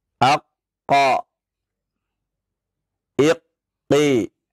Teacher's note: dalam keadaan tasydid dan tidak waqaf, maka tidak ada qalqalah di sana